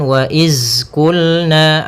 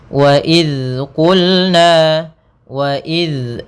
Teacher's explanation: Pada bacaan wa idz qulna, pada lafal idz hati-hati dalam melafalkan zal, jangan sampai kita ganti dengan huruf zai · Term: dzal